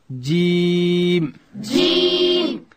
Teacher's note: جیم ادا کیږي چې کله د ژبې منځ لوړ تالو ته ورپورته کو، دلته حرف جیم ادا کیږي.